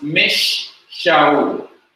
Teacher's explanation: The vowelless nun becomes part of shin, and the shin is doubled.